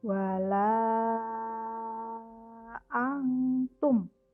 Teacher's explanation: kalau mad jaiz munfasil dia harus 5 harokat